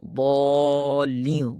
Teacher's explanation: تو ایک اور بڑی غلطی ہے ضالین، ضاد کے ساتھ اس لفظ کو جو ادا کیا جاتا ہے، پڑھا جاتا ہے، تو اس کے اندر بعض دفعہ اس کو ضاد پڑھنے کے بجائے اس کو دالین پڑھ لیا جاتا ہے، دال کے ساتھ پڑھ لیا جاتا ہے